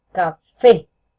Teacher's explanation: tiene la fuerza en fe, se identifica por la tilde y porque suena más duro esta sílaba.